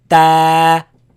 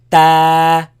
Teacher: So you're going to make it long. Comes from when you put the frontal part of your tongue behind the upper teeth.